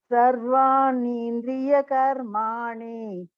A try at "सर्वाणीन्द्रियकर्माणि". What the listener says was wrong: This ni is hrasva, so we will not elongate it too much. Sarvani Indriya Karmani.